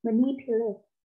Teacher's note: đánh trọng hai với chữ ni